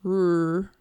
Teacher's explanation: So, when a child is making an R sound, we don't want their lips to be all the way rounded because then it's R, right? We're getting the W kind of sound in there.